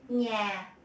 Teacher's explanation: Ñ, as in nhà, home. To pronounce this sound, you add a y sound following the n. Then you will have the ñ in Vietnamese.